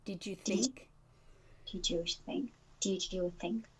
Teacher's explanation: did you can be more connected with a j sound